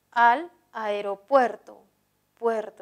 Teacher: la mayor fuerza de voz está en puerto